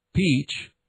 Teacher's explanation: The heavily aspirated labial sound p as in Peach